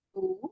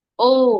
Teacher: উ একটু ঠোঁটটা চ্যাপটা করে বলবো, আর ও গোল করে বলবো।